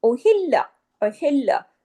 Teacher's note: लाम पे तशदीद है, सख्ती से जुड़ेगा, उहिल लाम जबल्ला, लाम को दो दफा किया पढ़ने में आना चाहिए।